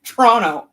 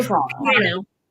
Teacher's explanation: you're not supposed to pronounce that second T